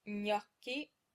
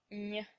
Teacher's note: place your tongue as if you were going to make an N sound, then push it very slightly forward and press it into the roof of your mouth before letting go